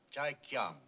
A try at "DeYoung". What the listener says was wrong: The name is DeYoung, sir. It's pronounced with a D.